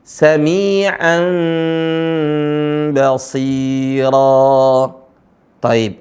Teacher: ada tanwin bertemu dengan ba di kalath nya dibaca Saman tapi suara nunnya berubah menjadi samar bahkan mengarah kepada suara huruf mim